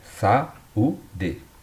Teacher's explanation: o u ele ficou sozinho na sílaba, né? Só que ele fez um hiato com a vogal anterior, com o a